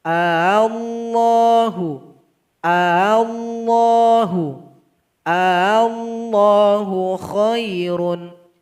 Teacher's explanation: Dia satu ketuk saja. Sedangkan hamzah yang kedua kita samarkan bunyinya. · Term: tashil